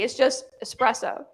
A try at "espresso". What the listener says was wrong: Espresso. There's no X in espresso.